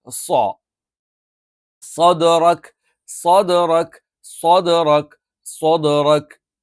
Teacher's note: നാവിന്റെ കൂർത്ത അറ്റം രണ്ടു വരി മുൻപല്ലുകൾക്കിടയിൽ അല്ലെങ്കിൽ അതിന്റെ തൊട്ട് പിൻഭാഗത്ത് വെച്ചുകൊണ്ടാണ് നമ്മൾ ഉച്ചരിക്കാറുള്ളത്.